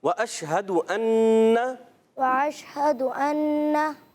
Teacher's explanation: अन्ना में आइन नहीं है, हमज़ा